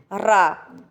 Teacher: रा का जब आप उच्चारण करते हैं रा बोलिए तो आपके जिह्वा के अग्रभाग में कंपन होता है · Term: प्रकम्पित व्यंजन